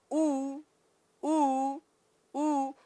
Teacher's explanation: जब आप ऊ बोलेंगे तो ऊ ऊ ऊ, ओठ देखिए गोलाकार हो गए, ओठ में विकृति आई, ओठ में परिवर्तन आ गया, इसलिए कौन से वर्ण, ओष्ठांग वर्ण।